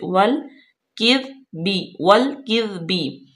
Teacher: लाम साकिन है, वाव को लाम में मिलाएंगे, काफ बारीक पढ़ेंगे, दाल पे सीटी की आवाज बिल्कुल नाइब, बिल्कुल नरमी से।